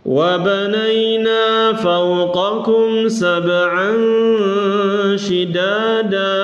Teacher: Dan ada gunnah didengungkan, ditahan sebentar.